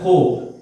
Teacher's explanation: খো টা যখন উচ্চারণ করতেছি ঠোঁটটা গোল হচ্ছে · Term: ঠোঁট গোল